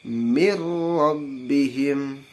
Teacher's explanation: Pakai apa ke hidung enggak langsung aja mirrobbihim itu birobbihim ya langsung dimasukkan ke huruf idgam bilagunnah nya tanpa memakai pakai dengung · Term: idgham bilagunnah